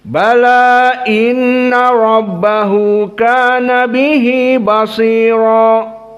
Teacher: dibaca dalam keadaan fathah dan 2 harokat saja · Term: qasr